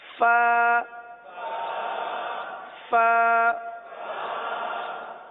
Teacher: یہ اوپر کے دانت اور نیچے کے ہونٹوں کا جو تر حصہ ہوتا ہے وہاں سے ادا ہوتا ہے